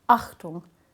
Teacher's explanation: All German words that begin with a vowel start with something that's called a glottal stop, which is where the glottis or your voice box closes off.